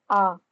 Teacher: जब हम आ का उच्चारण करते हैं तो हमारा पूरा मुंह खुलता है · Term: विवृत स्वर